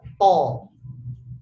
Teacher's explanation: Tapi kalau to itu pangkal lidahnya naik.